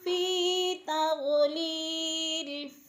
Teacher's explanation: یا مدہ ایک الف کے برابر کھینچ کر پڑھنا ہے، لمبا کرنا ہے